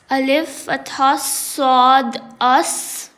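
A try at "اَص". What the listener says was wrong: You have to produce whistle sound. If you don't produce whistle sound, sad will resemble with letter tha. This is sa, 3 letters, and this is sad.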